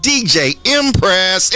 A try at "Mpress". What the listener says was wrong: Mpress, not Empress. With the M, not an E.